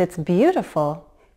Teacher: the most appropriate response was neither rising nor falling intonation. It was a combination of the two. A rise, fall.